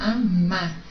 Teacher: o segundo A é mais forte, é uma oxítona